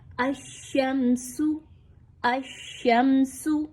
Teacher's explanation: میم ساکن کے بعد اگر سین کا حرف آ رہا ہے تو آپ نے میم کے اوپر اظہار شفوی کرنا ہے، کسی طرح کا غنہ نہیں ہونا چاہیے، یعنی میم کے اوپر آپ سٹاپ نہیں کریں گے، ناک میں آواز نہیں جائے گی، بلکہ میم کو بہت کلیئر کر کے پڑھا جائے گا · سین سیٹی والا حرف ہے، اس میں سیٹی کی آواز کو لائیے